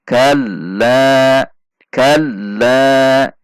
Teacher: Lam tasydid, huruf lam memiliki sifat tawasut, sehingga ketika dalam tasydid tidak boleh dibaca kalla, tidak boleh dibaca rata tekanan suaranya, namun menurun, sedikit menurun kemudian naik kembali. Kalla, kalla, seolah-olah akan berhenti namun tidak jadi berhenti.